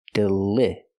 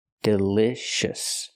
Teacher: We cannot use the long E sound like green beans. We use the short I sound like this is.